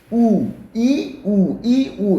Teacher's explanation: 혀가 앞으로 갔다 뒤로 갔다 앞으로 갔다 뒤로 갔다 합니다